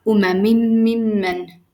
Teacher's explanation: the noon here fused into the meme, and it became meme with shidda on top. You see, meme mushaddada. · The noon was assimilated, it was fused, it was merged with a meme, and they became one consonant. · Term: assimilation